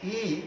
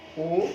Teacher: ই ওষ্ঠাধর প্রসিত হচ্ছে, আর যখন বলছি ও তখন কিন্তু গোলাকৃতি আকার ধারণ করছে